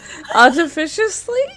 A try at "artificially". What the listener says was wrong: Artificially. There is no S. Ish. Lee.